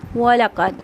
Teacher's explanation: वलक़द, हरकत को जल्दी से पढ़ना है, क़ाफ मोटा पढ़ेंगे, दाल हरूफ कलकला में से तो इसकी आवाज़ पलट के आएगी।